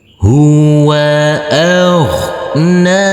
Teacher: huruf Gin yang bersukun ini tidak boleh dipantulkan karena ini bukan bacaan Qalqalah dan huruf nun ini kita baca panjang dengan panjang dua harakat